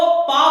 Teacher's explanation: पा बोलते समय आपके होठ टकराएंगे, जिसकी वजह से आपकी श्वास वायु मुंह में रुक जाएगी।